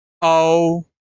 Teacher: औ भी कंठ से भी आ रहा है और ओठ से भी इसका उच्चारण हो रहा है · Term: कंठोच्च स्वर